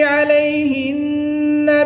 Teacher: نون مشدد میں ہمیشہ غنہ ہوتا ہے، یہاں پر غنہ کر کے پڑھیں گے